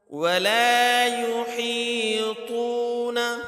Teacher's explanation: ہا حروف حلقی میں سے ہے، اس کو حلق سے ادا کرنا ہے